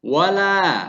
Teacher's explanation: wala lah di situ sebagai mat tabi'i yang panjangnya 2 harokat